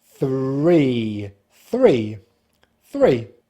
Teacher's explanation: When you pull the tongue back, it's important then to point it towards the roof of the mouth, but do not touch, to make the voiced R sound. Finishing with the lips spread and the tongue slightly forward at the front of the mouth for the long vowel sound, E.